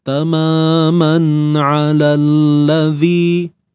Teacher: Ain ni makhrajnya tengah kerongkong. Kemudian lam, hujung lidah tekan pada gusi hadapan.